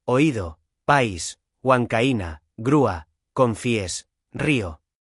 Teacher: Ocurre cuando se junta una vocal abierta con una vocal cerrada y la vocal cerrada es la que lleva la fuerza de voz, es tónica. No importa el orden, vocal abierta más vocal cerrada o vocal cerrada más y vocal cerrada.